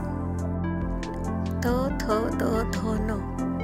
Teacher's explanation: दंतव्य त थ द थ न यांना दंतव्य म्हणतात कारण यांचा उच्चार करताना जीभ दातांना लागते